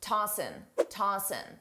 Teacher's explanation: commonly a native speaker will drop the G sound on tossing and just say tossing. Tossing. I personally don't do this, but many native speakers do.